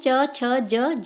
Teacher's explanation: ये तालु से यानी कि आपके तलुए से बोले जाते हैं।